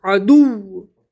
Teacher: क्योंकि वाव पर एक तशदीद है , इसलिए वाव को दो बार पढ़ना होगा। और तशदीद वव पर, यदि हम वव पर वक्फ करते हैं, तो हम वव पर तनवीन को जज़्म से बदल देंगे।